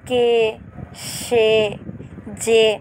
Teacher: এক অক্ষর সর্বনাম পদের এ সমৃত উচ্চারণ হবে।